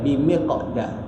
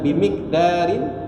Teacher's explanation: Lepas miq tu kita masuk huruf da terus. Sebab kita tak waqaf di situ. Memang tak boleh waqaf sebab di tengah kalimah. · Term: qalqalah sughra